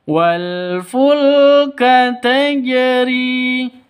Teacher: Wal fulka dibaca pendek, tidak ada yang dibaca panjang. · Karena jim itu hukumnya hurufnya qalqalah kalau sukun, begitu. Tajri harus dipantulkan ke huruf jimnya, karena di sini huruf qalqalahnya jim maka dipantulkan ke jim.